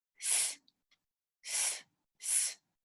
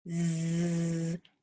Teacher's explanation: say s s s it's not really vibrating huh but when you go Z it it vibrates like it moves you can feel it right you can feel